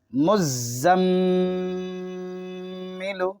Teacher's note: علیون، یزکا، یذکر، مزمل، یہاں پہ میم پہ تشدید ہے، چونکہ میم پہ تشدید ہوتا ہے تو غنہ ہوتا ہے، تھوڑی دیر ناک میں آواز کو روکنا غنہ کہلاتا ہے